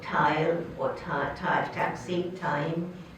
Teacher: All the English alveolar stops were borrowed as a retroflex.